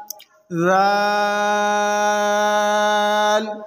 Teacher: ज़ाल को ज़बान का सिरा और ऊपर के दांतों के अंदरूनी किनारे से अदा करेंगे।